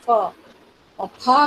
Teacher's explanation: जो फ बोला उसमें दांत और होठों का प्रयोग होता है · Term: ओष्ठे